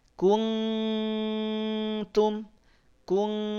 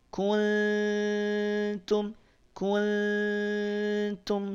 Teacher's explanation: Maka pastikan Nun sukunnya samar ada di antara izhar dan juga Idam kadar samarnya samar yang lemah tidak kuntum kuntum tapi kunum kunum